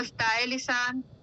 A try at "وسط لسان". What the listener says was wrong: اس کو نا وسطائی نہیں بولتے، وسط لسان. وسط لسان.